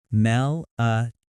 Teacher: The stress falls on toe, melatonin.